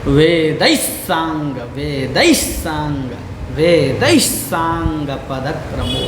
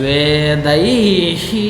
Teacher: अब यहाँ पर कुछ लोग बोलते हैं वेदैहि, तो यहाँ पर क्या होगा कि उनके पाठ में गड़बड़ा जाएगा कुछ मामला, तो इसलिए यहाँ पर क्या है, यहाँ पर स है तो इसका वेद का भी जो विसर्ग है इसमें भी स का उच्चारण होगा